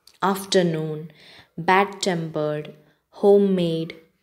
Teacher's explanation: compound words in which both the elements are accented